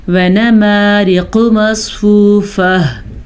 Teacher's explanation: موٹا قاف پڑھیں گے اور مصفوفہ میں ہا کی آواز ضرور نکالیں گے.